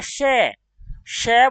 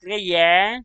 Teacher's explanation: श बोला तो मुख से वायु की मात्रा ज्यादा निकलती है य की तुलना में